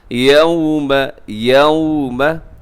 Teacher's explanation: واو ساکن ہو، اس سے پہلے زبر ہو تو واو لین ہوتی ہے، تو اسے نرمی سے پڑھنا ہوتا ہے۔ تو یہاں آپ نے نرمی دکھانی ہے، کوئی غصہ سختی نہیں دکھانی آپ نے۔